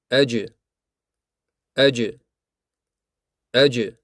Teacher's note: bu yerda avval havo qisqa vaqt to'xtaydi, keyin esa birdaniga chiqadi. Agar kimdir aj kabi cho'zib aytsa, bu xato bo'ladi. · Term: shiddat sifati